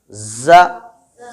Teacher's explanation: ز، آپ اس کو تھوڑا محسوس کریں، غور کریں کہ زبان کی نوک کہاں ہے. ز سامنے نیچے کے دانتوں کی جڑوں میں ہے نا